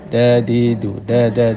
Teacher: Hati-hati mengucapkan dal ya, jangan sampai ada anginnya. Orang mengucapkan dal itu berarti telah mengeluarkan angin. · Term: jahar